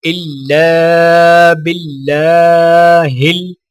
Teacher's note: لام کو الف کے ساتھ ملاتے ہوئے ایک الف کے برابر کھینچیں گے. اللہ کے لام کو باریک پڑھا جائے گا اور لام کے اوپر کھڑا زبر ہونے کی وجہ سے ایک الف کے برابر کھینچ کر پڑھا جائے گا